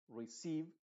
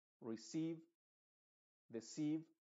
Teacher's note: estas palabras tú lo vas a notar se diría receive porque la e se está pronunciando con su sonido original de i